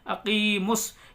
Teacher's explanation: یہاں پر میم کو ڈائریکٹ سواد سے ملائیں گے، الف، دونوں الف نہیں پڑھی جائیں گے اور لام نہیں پڑھا جائے گا. یہاں پر آپ کنفیوز نہیں ہونا ہے، میم کو ڈائریکٹ سواد سے ملا دیں گے.